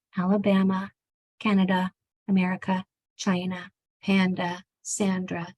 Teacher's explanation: Anytime that you see an A at the end, it's going to say it changes to the schwa sound.